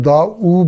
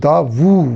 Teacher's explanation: یہ غلط تلفظ کے طور پہ ہم دا او بول دیتے ہیں، یہ دا وو ہوگا. واو پیش وو، جس طرح با پیش وو ہوتا ہے تو واو پیش وو ہوگا.